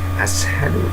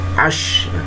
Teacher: Dia bibirnya dimajukan sya ya, bukan kalau bilang dimoncongkan. Sya seperti orang menggesu ayam, hush ya. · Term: huruf sya